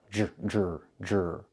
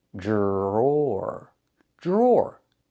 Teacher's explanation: The DR makes a J sound like in juice and jump. Plus the R, J, jr, jr.